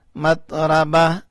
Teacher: میم تا زبر مت، را زبرا، مت را، با زبر با، مت رابا، تا ساکن، مت رابا. گول والا تا جب ساکن کرتے ہیں تو ہا بن جاتا ہے رکنے کی صورت میں، یعنی وقف کی صورت میں، اگر وقف نہیں کریں گے تو تا ہی رہے گا.